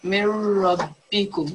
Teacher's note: Yeah, so we're basically, this is what we call complete assimilation. So we are not going to hear the noon sakin, so we join it directly. We are saying noon gunna, half noon.